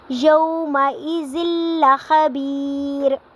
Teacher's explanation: ربہم بہم یومئذ لخبیر، یومئذ تنوین کے بعد لام آ رہا ہے تو یہاں پہ ادغام ہوگا اور بغیر غنہ کے ساتھ ہوگا۔ یہاں پہ ہم نے غنہ نہیں کرنا، زال کو لام کے ساتھ ملانا ہے۔ یومئذ لخبیر، یہاں پہ ہم نے غنہ نہیں کرنا، یہاں پہ صرف ادغام کرنا ہے، ایک لفظ کو دوسرے لفظ میں داخل کر کے، زال کو لام کے ساتھ داخل کر کے پڑھیں گے، اور غنہ بالکل بھی نہیں کریں گے، ادغام کریں گے۔